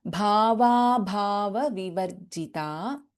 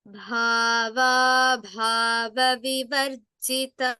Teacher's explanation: Both the bhas are Mahapranaksharas.